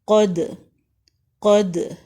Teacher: قاف زبر دال، قد، دال کے اوپر ساکن ہے، حروف کلکلا میں سے ہے، اس وجہ سے ہم کلکلا کر رہے ہیں۔ قاف جو ہے یہ بلند حروف ہے، اس کو بلند پڑھیں گے، قد، قد۔